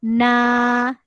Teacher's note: mad asli Alif dibaca nah dua harakat dua kali kiraan ataupun dua kali ketukan